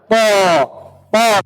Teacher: الطاء تخرج من طرف اللسان مع أصول الثنايا العليا، طرف اللسان كما هو موضح في الصورة، طرف اللسان مع أصول الثنايا العليا. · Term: مخرج الطاء